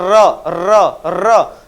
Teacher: र का जब भी उच्चारण करते तो हमारे जीवा क्या होती है कंपन करती है यानी कांपती है · करती है यानी कांपती है र बोल के तुम देखोगे तो तुम्हारी जीवा क्या करेगी कंपन करेगी इसलिए इसको प्र कंपित व्यंजन कहा इसे रब बोल के देखोगे · जैसे हम र बोलते हैं, र र र, तो क्या है, जीवा थोड़ा कांप रही, यानी कंपन कर रही थी, हो गया प्रकंपित व्यंजन।